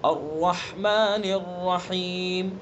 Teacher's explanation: الرحمن الرحیم، را کو پر پڑھیں گے.